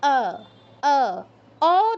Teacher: সংস্কৃতে ঠোটটা গোল করা যাবে না ডানে আর বামে প্রসারিত হবে ঠোট দুটো